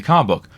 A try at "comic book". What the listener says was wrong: I love how you say comic book, by the way. You link comic book almost into one word.